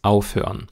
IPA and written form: ˈaʊ̯føɐ̯n (aufhören)